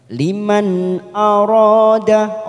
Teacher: namanya bacaan ghunnah kita tekan selama 3 harokat Kamila ini Liman nun sukun bertemu Hamzah kita baca jelas tanpa mendengung · nun sukun bertemu hamzah kita baca jelas tanpa mendengung, namanya bacaan idhar halki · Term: izhar halqi